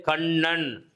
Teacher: நாவின் நுனி மேல்வாய் அன்னத்தின் நடுப்பகுதியை தொடுவதனால் என்ன செய்யும்? நகரம் பிறக்கும் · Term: டன்னகரம்